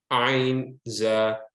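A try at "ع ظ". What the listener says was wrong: See your teeth. Ain, no need. Ah, your mouth opens when you say ain. Ain, ain, za. Ain, za. Ah, ain.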